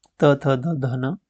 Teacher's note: दंत में आते हैं त्वर्ग